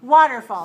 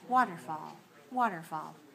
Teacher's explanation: 3 syllables, stress on the first. 3-1, right.